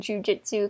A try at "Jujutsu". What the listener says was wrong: You said Jujutsu. Jujutsu. It's you, not an I.